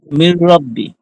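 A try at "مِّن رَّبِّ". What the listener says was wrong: হ্যাঁ, ঠিক আছে।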